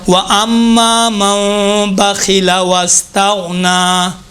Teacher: خا کے نیچے زیر ہو تو باریک ہوگا